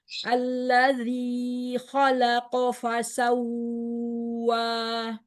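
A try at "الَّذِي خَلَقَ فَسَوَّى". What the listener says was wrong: Kepanjangan 2 harokat saja. Kemudian di kata fasawwa jangan ditahan, di situ naber.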